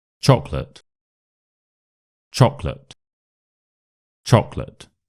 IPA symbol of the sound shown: ə